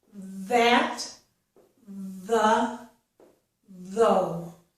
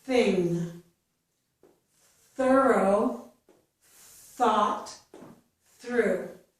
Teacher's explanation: it sounds softer than the voiced. And there's no vibration in the vocal cords. Voiceless means no vibration. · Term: voiceless TH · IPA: /θ/